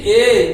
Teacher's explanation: তাহলে হ্রস্বই হ্রস্ব যদি সংবৃত হয়, তাহলে এখানে এ আর ও কে আমরা কি বলবো না, এদেরকে আমরা বলবো অর্ধ অর্ধ সংবৃত স্বরধ্বনি। অর্ধ সংবৃত স্বরধ্বনি, অর্থাৎ যে স্বরধ্বনি উচ্চারণ করার সময় মুখ সংবৃত স্বরধ্বনির তুলনায় ঈষৎ বেশি খুলে যায়